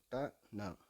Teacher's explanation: நுனிநாக்கு மேல்வாயின் நுனியை தொடுவதால் உண்டாகிறது. சொல்லி பாருங்க நுனிநாக்க மேல்வாயின் நுனியை தொடுவதால் இது உண்டாகிறது. · ச ஞ. அடுத்து ட ந நுனிநாக்கு மேல்வாயின் நுனியை தொடுவதால் உண்டாகிறது